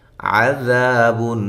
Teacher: عذاب، ذا الف مدہ، اور ذال کو نرم ادا کرنا ہے، عین کو واضح نکالنا ہے